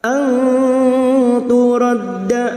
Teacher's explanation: nun sukun bertemu ta ikhfa hakiki, kita samarkan bunyi nun sukun dan mendengung 3 harokat.